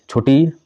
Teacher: छोटी ई तालव्य ह्रस्व स्वर है